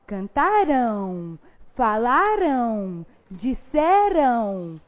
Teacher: quando a gente vai pronunciar esse AM, ele tem som de ão